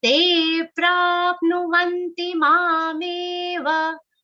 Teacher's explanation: Ma and me both are long sounds. Give them some time and say it.